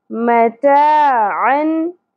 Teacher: ता बारीक होगी, आइन वस्ते हलक से अदा होगा, यहाँ इजहार होगा।